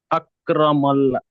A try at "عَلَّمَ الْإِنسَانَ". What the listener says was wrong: আল্লামাল, আল্লামাল আকরামান নয়, এখানে আকরামা নয়, লাম আছে, আইন লাম না। আল্লামাল ইনসানা।